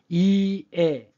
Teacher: 이와 연속으로 발음합니다. 혀가 밑으로 내려오는 게 사실은 뭐냐면 입이 그만큼 더 벌어지는 거예요. 그래서 절대적인 높이는 낮아지는 겁니다. · 혀끝이 밑으로 내려오면서 목구멍 쪽으로 들어갑니다.